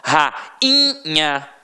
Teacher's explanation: o I foi o quê? Nasalizado. Então não teve som de I de verdade.